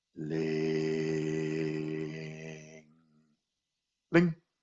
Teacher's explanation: ling, long and slow, and then lifting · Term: rising tones